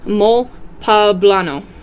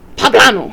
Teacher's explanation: pronounced with the emphasis on the second syllable like guacamole